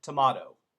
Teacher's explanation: In England, tomato. But also where some Americans get it wrong is they make that last T almost a D.